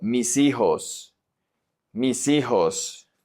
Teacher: Here, mis, the S, the H is silent, so the S is going to connect to the I. Remember that the H in Spanish is always silent.